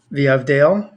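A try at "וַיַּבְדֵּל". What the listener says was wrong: So try to pay attention to pronounce it really specifically. So it wouldn't be Veyavdel, it would be Vayavdel.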